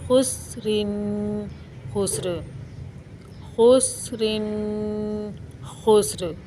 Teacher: हमने दो पेश और दो ज़ेर को वक्फ़ की हालत में साकिन करके पढ़ा था